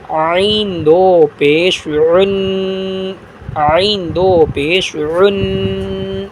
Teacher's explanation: عین کو کیسے پڑھیں گے؟ عین دو پیش عن، عین دو پیش عن، حلق سے ادا کریں گے